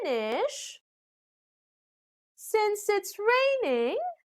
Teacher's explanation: we also use rising intonation when we couldn't finish what we are saying